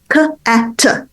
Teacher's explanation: So if the child cannot do the k at the beginning, right, that's a velar plosive, right? A sound that's produced, further back in the oral cavity